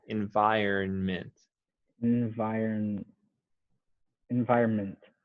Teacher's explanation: now you do want to say the n okay not too strong but it is there